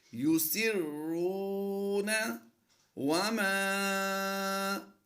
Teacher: یسرون وما، لمبا کرنے کی وجہ یہ ہے کہ الف سے پہلے حرف پر زبر ہے تو یہ الف مدہ ہوا، تو یہاں پر ہم تھوڑا لمبا کر کے پڑھیں گے